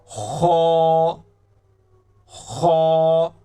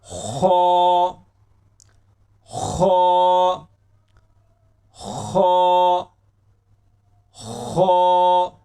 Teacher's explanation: खा जो लफ्ज है ये गले के सबसे ऊपर वाले हिस्सा से अदा होता है।